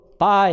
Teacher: 이건 이중 모음을 이제 하나의 이제 모음으로 보니까 바이 할 때 처음부터 끝까지 성대가 울려요, 그죠? 처음부터 끝까지 울립니다. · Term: 브이스트 컨소넌트